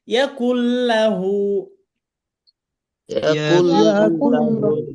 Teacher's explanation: নুন সাকিনের বামে বিহিম, লাম আছে, এখানেও গুন্না ছাড়া ইদগম।